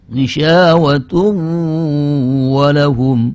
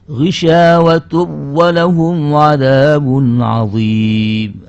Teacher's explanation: Ini nun tanwinnya ghisyawatun itu menurut hukum jumhur ulama harus dibaca dengan idgham yang disertai dengan izharul gunnah. Artinya menampakkan gunnah, ada gunnahnya gitu.